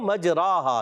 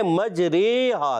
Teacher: اسی طرح یہاں پر بھی جو ہے امالہ جب ہوگا تو کیا ہوگا، اصل یہ لفظ تھا مجراہا، کیا تھا، جی ہاں یہ مجراہا تھا، تو یہ الف کو یا کی طرف مائل کر دیا ہے